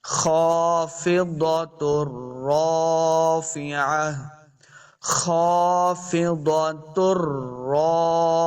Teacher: تا کو را کے ساتھ ملانا ہے